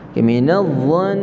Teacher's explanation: Minadh-dhan semua dengar tu, nun sabdu wajibul gunnah.